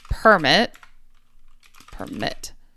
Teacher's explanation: So, verb, the emphasis comes second. Noun, the emphasis comes first.